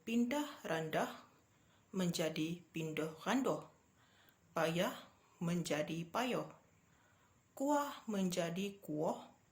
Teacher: daripada vokal A, vokal depan luas dalam bahasa Melayu standard kepada dialek Terengganu, iaitu vokal U, vokal belakang separuh sempit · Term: pemudaran vokal